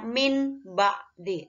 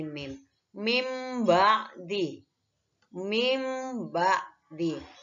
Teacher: cara membaca bunyi bacaan nun sukun dibalik menjadi bacaan mim sukun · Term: iqlab